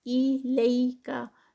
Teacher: انزیلا الیکا، ایلیکا، لئی جو ہے وہ یا لین ہے اس لیے اس کو بہت 2 کاؤنٹس کا اسٹریچ نہیں ہوگا، اس سے کم کا ہوگا